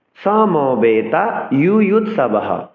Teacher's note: অর্ধ হ নয়, সম্পূর্ণ হ উচ্চারণ করতে হবে। এক্ষেত্রে বিসর্গ এর পূর্বের ব্যঞ্জনের সাথে যদি কোনো শর্ট চিহ্ন বা কাট চিহ্ন যুক্ত থাকে, তবে সেই শর্ট চিহ্ন এবং কাট চিহ্নের উচ্চারণকেও বিসর্গের সাথে জুড়ে, অর্থাৎ হ সাথে জুড়ে উচ্চারণ করতে হবে।